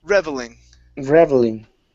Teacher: So the stress is at the very beginning.